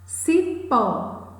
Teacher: a sílaba mais forte, a sílaba tônica é pó.